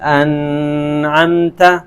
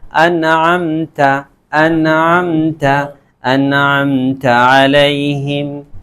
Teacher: بالکل ظاہر کر کے پڑھیں گے، اس میں ذرا بھی غنہ نہیں کریں گے، ذرا بھی ٹھہریں گے نہیں۔ ہم یہاں یہ نہیں پڑھ سکتے انعمت، ایسے بھی نہیں کر سکتے، بالکل نون کو کلیئر کر کے صاف ستھرے نکل جائیں گے۔ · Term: اظہار